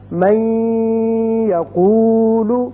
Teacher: ہم اس کو جب من کو یقولو کے ساتھ ملائیں گے تو ادغام کریں گے اور یہاں 1 الف کے برابر آواز ناک کے بانسے میں ٹھہرے گی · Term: ادغام غنے کے ساتھ